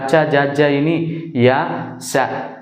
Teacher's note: దవడల సహాయంతో పలికే వాటిని తాలవ్యాలు అంటాం